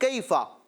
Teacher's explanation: اس قاعدے کو یوں بیان کریں گے کہ یا ساکن سے پہلے زبر آ رہی ہے، لہٰذا کیا ہوگا؟ یا لین، اور اس کو کھینچیں گے نہیں، کیفا۔ ٹھیک ہے؟